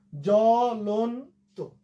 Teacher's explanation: এখানে কিন্তু বন্ধুরা একটা জিনিস খেয়াল করো, এই যে তটা তো কেন হলো, এই ত এর মধ্যে একটা অ আছে, অ উচ্চারণটা সংবৃত হলো